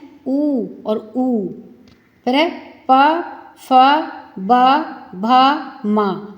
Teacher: आपके होठ से स्पर्श करते हुए यह वर्ण बाहर निकलते हैं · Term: ओष या वर्ण